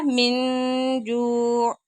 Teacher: تنوین کے نون ساکن کے بعد جیم آ گیا، یہاں پہ اخفا ہو رہا ہے۔